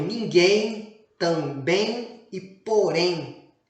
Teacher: na pronúncia do em a consoante M acaba virando a semivogal i